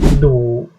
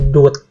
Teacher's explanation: Huruf dodek kalau di awal suku kata itu bunyinya D ya, D. Contohnya kata du. Nah, kalau di akhir suku kata itu tuh berubah bunyi menjadi T. Contohnya misalkan kata dut.